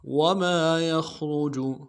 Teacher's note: یا کو خا کے ساتھ ملانا ہے، خا کو موٹا ادا کریں گے، را کو موٹا ادا کریں گے، جیم کو نرم سے ادا کریں گے۔